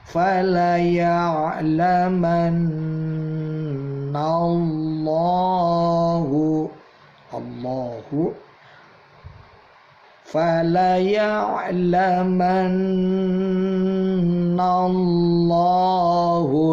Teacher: nunnya ada tasydidnya, ditahan dulu 2-3 ketuk, udaranya keluarkan lewat hidung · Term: gunnah